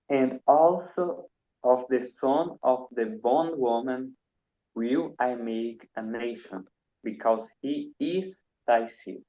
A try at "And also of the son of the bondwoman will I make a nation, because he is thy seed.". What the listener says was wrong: Very well pronounced. Thank you.